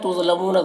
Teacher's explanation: تظلمون ذا کو پر پڑھیں گے، حروف مستعلیہ میں سے ہے